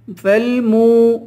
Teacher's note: میم کو واو سے ملا کر واو کو کھینچ کر پڑھیں گے